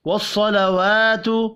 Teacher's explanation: پڑھا جائے گا، والصلوات صاد حروف مستعلیہ ہے پر پڑھیں گے، واو کھڑی زبر کی وجہ سے ایک الف کے برابر کھینچ کر پڑھا جائے گا